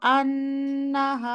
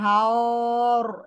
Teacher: হা complete করে তারপরে র হেভি করেন